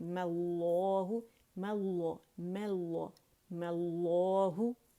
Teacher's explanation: میم ساکن پڑھنے کی بجائے اس پہ میں نے فتحہ لگا دی اور لفظ الجلالہ سے میں نے اسے جوڑ دیا